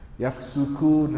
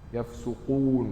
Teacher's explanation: Hampir sama cuma kaf nipis qaf tebal.